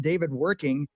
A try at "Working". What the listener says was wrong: You actually pronounced it wrong. The W is like a soft J.